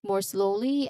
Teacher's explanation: So this is two syllables. The first and stressed is slow